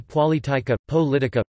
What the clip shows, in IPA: poˈlitika